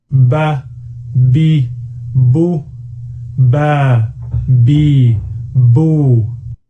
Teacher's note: the lips are pressed together and then released to make the B sound. · We pronounce the letter Ba by building up pressure between the lips and then releasing the air suddenly.